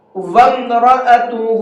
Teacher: تو میں آپ کو بتا دوں وَأَم نہیں ہے، وَم ہے، واو کو ڈائریکٹ میم میں ملائیں گے، اور جو بیچ کا الف ہے اب یہ الف نہیں پڑھا جائے گا